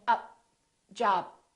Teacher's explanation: holding your tongue for the T or the D but and/or closing your lips and saying up job don't release the puff of air